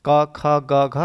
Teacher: का, खा, गा, घा हम कंठ की सहायता से ही बोलते हैं। तो का से इंज्ञा तक लेकर आपका 5 वर्ड कंठ कंठ से बोला जाता है, यानी इनका उच्चारण स्थान कंठ से है।